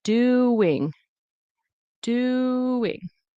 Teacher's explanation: There's a W in between.